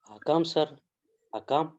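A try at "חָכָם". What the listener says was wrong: Not Hakam. Almost you are right. This is not H. This is KH. KH. How you will read KH? Kakam. Kakam. Because KH means Kha.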